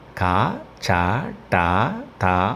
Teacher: హల్లులు ప్రధానంగా ఎన్ని రకములు మూడు రకములు పరుషములు సరళములు స్థిరములు పరుషములు అనగా కఠినముగా పలుకబడునవి వీటిని శ్వాసములు అని కూడా పిలుస్తారు